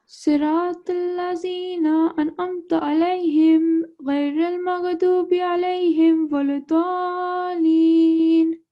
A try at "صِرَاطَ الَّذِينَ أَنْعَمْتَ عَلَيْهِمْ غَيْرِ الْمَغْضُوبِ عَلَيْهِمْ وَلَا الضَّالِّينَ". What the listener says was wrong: So when you recite, slowly in a slow motion so that your pronunciation is very clear, because at the beginning it was okay. Towards the end of the verses and the surah, you took up speed, which wasn't good, and some of the words were not able to be heard.